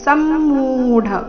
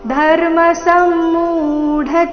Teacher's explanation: ಸಮ್ಮೂಢ ಮು ದೀರ್ಘ ಮುಂದೆ ಡ ಮಹಾಪ್ರಾಣ ರಸ್ವ